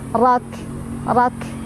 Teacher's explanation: Sadrak. Ro-nya dibaca secara tafkhim karena ro-nya berbaris fathah. Jadi cara bacanya ditebalkan. Rak. Dan kafnya ada angin, hamas keluar.